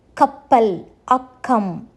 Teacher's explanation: சொல் முதலிலும் சொல் நடுவில் இரட்டித்து வரும்போதும் க என்னும் எழுத்து கே உச்சரிப்பை கொடுக்கும்